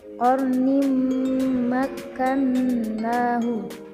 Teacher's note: Selanjutnya pada kalimat qarnim makkannahu, yaitu tanwin bertemu dengan mim, maka termasuk hukum bacaan idgham bi gunnah. Cara membacanya dengan didengungkan.